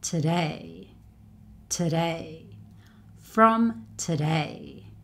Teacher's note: It's never stressed. So day is the syllable that's stressed here